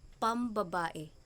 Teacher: ang N ng pang ay nagiging M ayon sa kasunod na tunog. Kapag nagsisimula sa panlaping pang o sing at sinusundan ng salita na nagsisimula sa P o B ay napapalitan ng M.